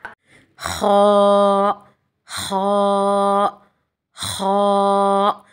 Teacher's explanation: خا ہمارے حلق کے اوپری حصے سے یعنی اپر پارٹ سے ادا ہوتا ہے، ہمارے تھروٹ کے جو جوالا یعنی کوے کے پاس نرم حصہ ہوتا ہے وہاں سے ادا ہوتا ہے۔